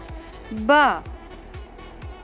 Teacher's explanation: जब आप ब बोलते हैं तब आपके दोनों होंठ आपस में एक दूसरे को छूते हैं, तभी ब की ध्वनि निकलती है।